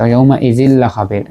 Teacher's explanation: ইয়াউমা ইজিল লা খাবির, এই যে ইয়াউমা ইজিল লা খাবির, জালের পরে দুইটা জের মানে তানবিন, এরপরে লাম আসছে, তো এখানে ইয়াউমা ইজিল লা খাবির কিন্তু কোনো গুণনা নাই, বেলা গুণনা, ইদগামে বেলা গুণনা, রা এবং লাম এই দুইটা হরফ যখন নুন সাকিন বা তানবিনের পরে আসছে তখন এটা ইদগাম হচ্ছে কিন্তু বেলা গুণনা অর্থাৎ গুণনা ছাড়া।